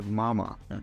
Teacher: m is a voiced sound which means that our vocal cords vibrate during its production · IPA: /m/